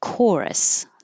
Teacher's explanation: This is another ch that sounds like a K.